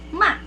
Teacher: So fourth tone is a falling tone.